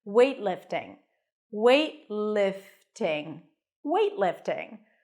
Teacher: transition from the T to the L directly weightlifting weightlifting weightlifting I'm going to go do some weightlifting cuz